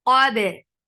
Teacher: Qaf is heavy. Fatha, open your jaws. Attach it ba. Ba will get qalqala. Qabe. Li for kasra give e sound.